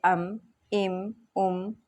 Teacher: میم دونوں ہونٹوں کے خشک حصے سے ادا ہوتا ہے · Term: میم کا مخرج